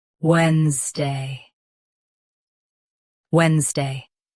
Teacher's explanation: Stress wens. Keep day light.